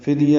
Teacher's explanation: فدیہ میں فا کو دال سے ملانا ہے، دال ساکن پہ قلقلہ ہے